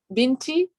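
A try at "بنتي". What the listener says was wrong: Yeah, very good.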